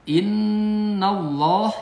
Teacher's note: nun ada tasdid di atas huruf nun jadi gunah. Innallah ini tafkhim.